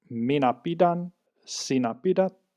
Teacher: the weak grade would be this D sound there